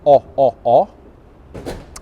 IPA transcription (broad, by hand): ɒ